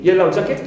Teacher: Also for the word of yellow jacket, as one word, represents that insect, clear, which looks like a bee, right, like a bee. Yellow jacket, as one word, as a compound noun, I stress the first element.